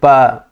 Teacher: प बोलते हैं तो प में सीधे प दोनों ओष्ठ स्पर्श कर जा रहे हैं एक दूसरे को तो इनका उच्चारण स्थान ओष्ठ माना गया है।